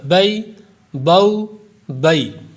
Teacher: حروف لین کو ہم نرمی سے پڑھیں گے، معروف پڑھیں گے، جھٹکا بھی اس میں نہیں دیں گے اور کھینچیں گے بھی نہیں، دراز نہیں کریں گے، لمبا نہیں کریں گے اس کو۔